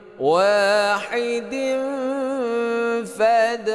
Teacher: kasratain bertemu dengan fa ini ikhfa hakiki panjangnya dengungnya dua harakat samar